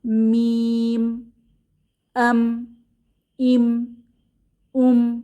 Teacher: মিম উচ্চারণ করার সময় দুই ঠোঁটের শুকনা জায়গা ক্লোজ হয়ে যায় এবং আওয়াজটা নাকে চলে যায় মিম আম ইম উম এটা করার জন্য নাকে এক্সট্রা কোন প্রেসার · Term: গুন্নাহ